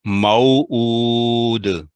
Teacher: مئو تھوڑا لمبا کریں نرمی سے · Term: حروف لین